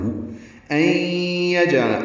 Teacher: این میں ادغام ناقصہ غنہ کریں گے، جیم ساکن پہ قلقلہ ہے. عین لام جلدی ادا کریں گے، عین وسط حلق سے ادا ہوگا، لام باریک پڑھا جائے.